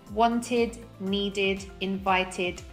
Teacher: only use id when the last sound of the verb is either a t or a d